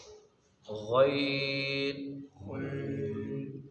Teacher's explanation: حلق کے اوپر والے حصے سے، جہاں سے خا ادا کیا تھا وہیں سے غین ادا ہوگا